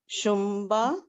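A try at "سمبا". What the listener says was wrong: شمبا نہیں، سین ہے دیکھیے.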